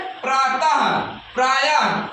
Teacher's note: विसर्ग का उच्चारण ह की तरह होता है